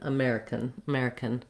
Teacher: with the k at the end of american it almost goes directly to the n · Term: syllabic n